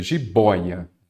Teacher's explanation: Então, já vi que a sílaba tônica é a penúltima. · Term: Paroxítona